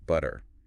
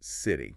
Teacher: the T sound sometimes turns into a soft d as especially in the middle of words it's called the flap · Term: flap T